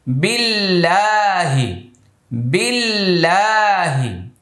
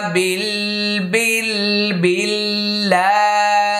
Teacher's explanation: বিল আল্লাহ শব্দের পূর্বে জের আসছে, এটা পাতলা হবে।